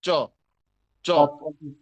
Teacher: অতএব মাথায় রাখতে হবে আমার যেন কোনোভাবেই ছ না হয়, ছুটে না যায়, আটকে থাকে। চ প্রয়োজনে জিভের মাঝখান তার বরাবর উপরে তালুর সাথে ঘষা দিয়ে উচ্চারণ করতে হয়, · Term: অল্প প্রাণ